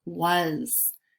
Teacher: was has the schwa sound it's spelled with an A but sounds like short U